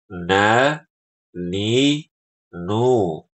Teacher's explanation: Nah, jadi ada suara ee dengung di hidung kita